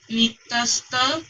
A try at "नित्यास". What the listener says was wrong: नित्यस ता को एक साथ मत कीजिए आप सिर्फ नित्यास बोलिए